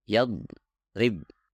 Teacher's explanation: Kesalahan pertama adalah memotong suara huruf dhad. Dan ini sangat sering terjadi, terutama ketika dhad mempunyai tasdid di dalamnya.